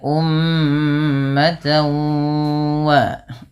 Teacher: Kemudian cara membacanya disertai dengan bacaan gunnah. Yang mana cara membacanya adalah memasukkan bunyi tanwinnya kepada huruf waw. Maka ummatan wa baru dilepas. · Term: idgham